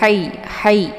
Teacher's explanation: letak posisinya di tenggorokan Tengah